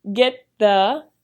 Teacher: The t and the th sounds blend together into get the.